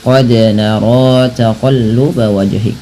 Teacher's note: Pantulkan bunyi suara huruf dal ketika ia berharakat sukun